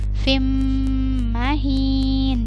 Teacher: Kemudian fim, di sini ada mim bertasydid, maka dibacanya sama seperti nun yang bertasydid. Jadi fim ditahan dulu 2-3 harokat